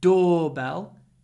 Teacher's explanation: remember the stress on the first word